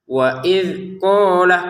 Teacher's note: qof-nya ini kita panjangkan dua harakat lamnya enggak ada. Jadi jangan waid qolamnya qofnya saja yang panjang ya dua harakat.